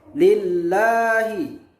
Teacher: Tarqiq artinya tipis, karena ada sebelum lam ada harokat kasroh, yaitu li.